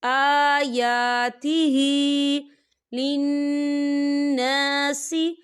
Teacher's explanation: آیا کھڑی حرکات ہے، 2 حرکت کے برابر کھینچیں گے